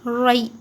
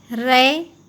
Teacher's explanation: مجہول نہیں پڑھیں گے، معروف پڑھیں گے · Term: یا لین